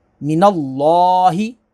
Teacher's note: अल्लाह के लाम से पहले ज़बर है तो इसे पुर पढ़ेंगे, इसको मोटा करेंगे और खड़ा ज़बर को खींचेंगे।